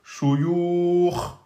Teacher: Et shuyukhun, à l'arrêt devient shuyukh. On termine par soukoun, précédé d'une lettre de prolongation. Eh bien, on a droit de faire 2, 4 ou 6.